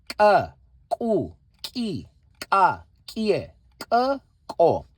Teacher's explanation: it comes from the same place as the normal letter K, ka, except here we give pressure from the throat